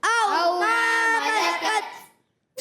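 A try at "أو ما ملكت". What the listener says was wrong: جی آواز آنی چاہیے، تا شدیدہ مہموس حرف ہے، او ما ملکت، ملکت، او ما ملکت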